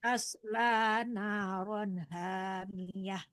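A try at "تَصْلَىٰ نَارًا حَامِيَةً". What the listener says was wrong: Ha ya, ha di tengah-tengah tenggorokan. Hamiyah.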